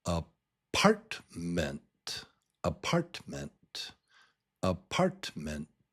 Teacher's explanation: Now, there are three syllables here. Three and the strong beat, the strong syllable is in the middle. It's syllable number two.